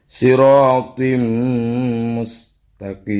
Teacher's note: Dimasukkan ke mim langsung. Jadi tanwinnya langsung dimasukkan ke mim. Dan didengungkan. Idgham bi gunnah, didengungkan.